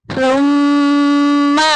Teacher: میم شدید آگئی، غنہ کریں گے، ناک میں آواز لے کے جائیں گے۔